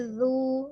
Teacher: sempurnakan monyongnya itu ketika dhomah ya tapi tidak dipanjangkan